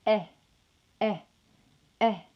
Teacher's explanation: will be represented by the epsilon symbol to produce this sound the body of the tongue is going to be located midway between the mid and low positions of the mouth and your lips will be unrounded